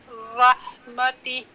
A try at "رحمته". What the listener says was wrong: نہیں ٹہ سٹاپ ٹہ اور سانس جاری اور نکالیں سانس رحمتہ